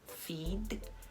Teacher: O D é muito sutilmente pronunciado.